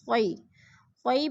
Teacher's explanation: خوئی پہ یا لین ہے، لمبا بھی نہیں کرنا اور جھٹکا بھی نہیں دینا خوئی کو